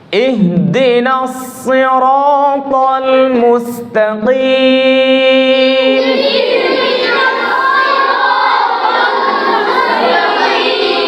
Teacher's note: সিনের উচ্চারণ হবে না সদ মোটা হবে